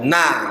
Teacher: ujung lidah bertemu dengan langit-langit depan atau tumbuhnya gigi seri atas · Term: Nun